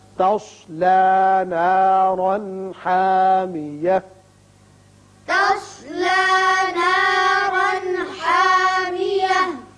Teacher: تصلی میں صاد پر پڑھتے ہیں، نارن تنوین کے بعد ہا ہے اظہار حلقی ہوگا